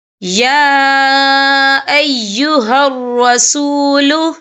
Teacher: یا کے پر کھڑی حرکات ہے اور اس پر چھوٹی سی مد بھی ہے، تو ہم یہاں 3 یا 4 عدد کے برابر کھینچ کے پڑھیں گے